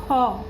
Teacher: মূলধ্বনি ক উচ্চারণে মহাপ্রাণ হ ধ্বনি মিশলে ক যোগ হ হয়ে হয় খ। খ উচ্চারণের সময় যেন একটা হয়ের উচ্চারণ ভেতর থেকে হচ্ছে, খ হলো মহাপ্রাণ ধ্বনি